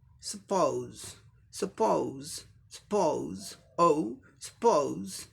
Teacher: पी पी, ये double पी के लिए एक ही प साउंड आएगा। ओ के लिए अ उ साउंड, अ उ ये डिफ्थोंग, दो वावल साउंड मिलकर अ उ। और यस ई के लिए ज साउंड आएगा।